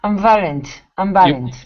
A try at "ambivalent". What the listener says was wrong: you're missing the Biv Biv